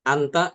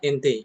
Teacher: Imalah semacam itu ya. Jadi ee dia tidak dibaca fathah tapi juga tidak dibaca kasrah tapi tengah-tengah